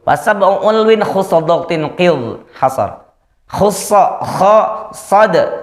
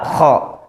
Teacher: Isti'ala terangkat pangkal lidahnya. Sehingga bunyinya menyebabkan menjadi tebal.